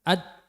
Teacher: dal itu makhrajnya di ujung lidah mengenai pangkal gigi seri pertama atas. Berarti untuk ujung lidahnya menempel di bogole untu ngarep.